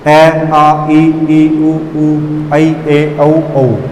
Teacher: ठीक है, इनको बोलते समय मुख केवल हमारे वायु है जो केवल मुख से बाहर आ रही है, इनमें हमारे नासिक पर कोई दबाव नहीं डाला जाए, नासिक से नहीं बोली जाती। · निर्नुनासिक उच्चारण करते समय वायु केवल मुख से ही बाहर आएगी। ऐसे स्वर जिनको उच्चारण करते समय वायु केवल मुख से ही बाहर आए निरनुनासिक स्वर कहलाते हैं।